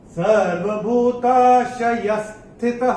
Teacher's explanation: दूसरे चरण में चरण की समाप्ति पे विसर्ग आ रहा है उसका उच्चारण केवल और केवल ह ही होगा।